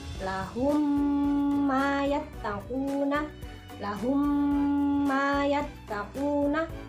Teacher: mim yang pertama yaitu berharokat sukun. Nah, dibacanya ini dengan cara mendengung. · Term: idgham misli